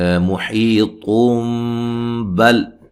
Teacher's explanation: نون تنوین کا اقلاب ہوگا، ٹھیک ہے، نون کو میم سے بدل کے پڑھیں گے